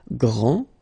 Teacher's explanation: Okay, so we've got a little bit the same situation here as we had previously with français and française, because we don't pronounce the final S in français, and it's exactly the same thing. This final D is not pronounced.